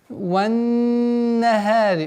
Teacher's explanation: Удерживаем назализацию в размере двух огласовок.